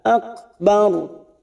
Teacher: Kita wakaf pada huruf ro di sini dan sebelumnya ada fathah. Kita baca tafkim atau tebal.